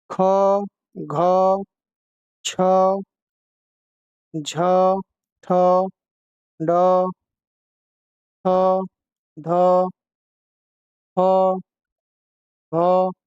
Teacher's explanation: ऐसे वर्ण जिनके उच्चारण में श्वास अधिक मात्रा में निकले और हकार की ध्वनि उत्पन्न हो, महाप्राण कहलाते हैं। प्रत्येक वर्ग का दूसरा, चौथा तथा समस्त ऊष्म महाप्राण है।